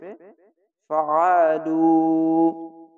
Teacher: পেশের পাশে সাকিন এক আলিফ টেনে পড়বেন, আইনটিকে মোটা করে গলা চিপে